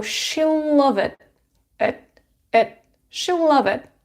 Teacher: we have stop t here you don't release to so she'll love it she'll love it right and for